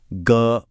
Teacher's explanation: अगर गले पर हाथ रखकर ग बोलें तो एक वाइब्रेशन महसूस होती है। यह एक घोष ध्वनि है।